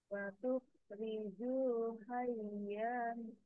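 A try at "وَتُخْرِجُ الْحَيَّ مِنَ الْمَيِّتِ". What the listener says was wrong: Ya, diulangi ya-nya kebanyakan.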